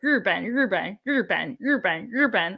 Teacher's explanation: Downward, it's the fourth tone, and then Ben, the third tone, Ruben.